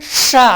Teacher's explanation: ஷங்கர்னு உச்சரிக்கும் பொழுது ஷ எப்படி ஷ அந்த நாக்கை மேலே இருக்கிற பல்லுனால அழுத்துறோம்.